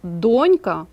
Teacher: але слово донька наголос на першому складі